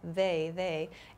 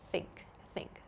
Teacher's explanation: we have a voiced they th sound they they and we have an unvoiced th sound like in think